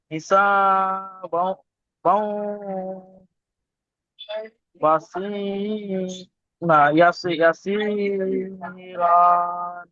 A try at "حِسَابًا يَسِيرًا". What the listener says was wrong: এখানে হিসাবাও হবে না, বা ইয়া দুজাবার বাই। হিসাবাই ইয়াসিরন নয়, দুজাবার থামলে এক জাবার গণ্য করে একালি টান দিয়ে পড়তে হবে। তাহলে আয়াতটি হবে, فسوف يحاسب حسابا يسيرا।